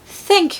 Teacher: the short a sound in modern RP turns into an e sound